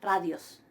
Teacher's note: la iota suscripta de ra no la estoy pronunciando